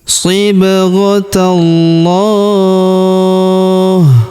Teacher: Kemudian pada huruf lamnya ini kita tahan dan tekan karena terdapat tanda tasdid. Lalu kita panjangkan dua harakat karena alif kecil di atasnya